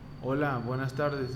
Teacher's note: hay un tono más bajo más grave el volumen es menor la cadencia es más lenta